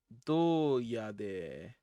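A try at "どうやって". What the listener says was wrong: Doyatte. With a T, yes.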